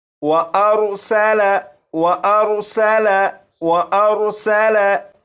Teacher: सीन को सीटी की आवाज़ के साथ पढ़ेंगे